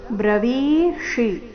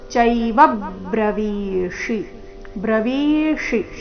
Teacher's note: ಚೈವ ನಲ್ಲಿನ ವ ಮೇಲೆ ಆಘಾತ